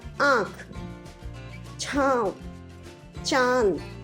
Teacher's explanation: अनुनासिक अम, इसका उच्चारण नाक तथा गले दोनों से होता है